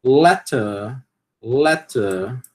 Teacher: Não vai aspirar, por quê? Porque está no final de uma sílaba tônica, né? A gente aspira o t quando ele está no início de uma sílaba tônica, né?